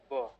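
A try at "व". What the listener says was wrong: না, ব কেন বলছেন? ও, ও, ও। নিচের ঠোঁটে উপরের দাঁতগুলো টাচ করান, তারপর বলুন ও। এখানে কিন্তু ব আসবে না, ও।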